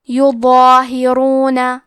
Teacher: مد الف میں پیچھے والے حرف کا حکم لیتے ہیں، تفخیم میں اور ترقیق میں تو کیونکہ اس کے پہلے حرف الضو ہے تو ہمیں مد الف کو بھی بھاری آواز میں پڑھنا ہے۔